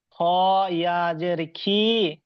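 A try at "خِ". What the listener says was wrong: খি নয়, খটা পুর। খটা পুর, খটা পুর হরুপ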